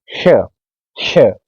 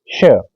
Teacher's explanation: इसमें जीवा हमारे मूर्धा तक जाएगी यानी इस हिस्से पर रहेगी श तो इस तरह से उच्चारण